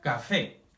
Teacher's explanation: café si pronunciamos más fuerte el fe · Pronunciamos más fuerte el fe. Y como es una palabra que termina en vocal, se acentúa. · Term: palabra aguda, sílaba tónica